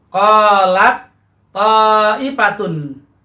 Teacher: ini yang dilebur ta dengan to, maka yang terbunyi adalah bunyi to. Qalat po, qalat po, pertama ta kemudian langsung masuk ke huruf to. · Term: mutajanisain